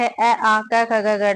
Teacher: उच्चारण की दृष्टि से अ और आ कंठ स्वर है